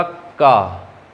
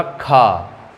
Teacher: जैसे आपने बोला का, फिर बोला खा, तो का में खा की अपेक्षा कम हवा बाहर निकलेगी, कम वायु बाहर निकलेगी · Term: अल्प प्राण